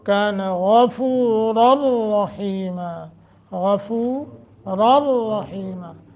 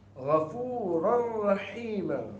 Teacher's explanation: غین کو بھی پر کریں گے تفخیم، اور را کو بھی